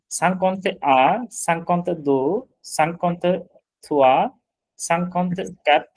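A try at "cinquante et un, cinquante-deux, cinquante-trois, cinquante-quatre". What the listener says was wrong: আপনি সাংকন্তে বলতেছেন একটাতে, শুধু এ কিন্তু একটাতে, প্রথমটাতে, বাকি কোনটাতে এ নাই।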